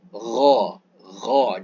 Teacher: seakan-akan ada bunyi macam kekahak tapi kita telan ke dalam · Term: huruf gain